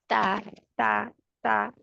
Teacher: ज़ुबान की नोक ऊपर वाले 2 दांतों की जड़ से लगे